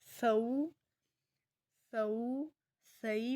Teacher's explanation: تو تئی سا ہے، ہم سا کو نرمی سے ادا کریں گے، اس کے لیے سختی یا سیٹی کی ضرورت نہیں ہے۔ ہم اس کو سو سو سئی پڑھیں گے، سو سئی نہیں پڑھیں گے۔